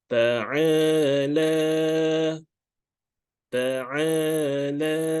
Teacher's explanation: ain with the fatha meets with the alif, therefore a, we have to read for 2 counts. And the la as well, we have to read for 2 counts.